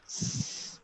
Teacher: When you produce this sound, you don't feel any vibration in your vocal cords. S. The sound is voiceless sound.